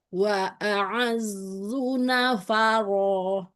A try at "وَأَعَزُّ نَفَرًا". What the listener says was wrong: Jangan dikepung suara ro-nya, Umi. Istilah aja. Nafaro. Tebal aja. Tafkhimkan saja.